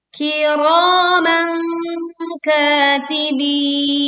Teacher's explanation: Kiro dibaca ro dengan suara yang tebal, lalu panjangkan 2 harokat. Kita baca dengung atau kita menyamarkan bunyi fathah tanwin dan membentuk makhraj huruf kaf saat tanwin dibacakan.